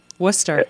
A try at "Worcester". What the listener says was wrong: No, just Worcester. No R.